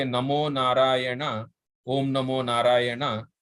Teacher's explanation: Like so when you say Narayana, you can actually see that the place where the tongue touches moves gradually from outside to inside. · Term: cerebral na